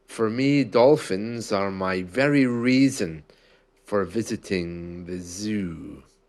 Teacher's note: towards the end of those words, I wasn't only stretching vowels, the N sound had a bit of a stretch as well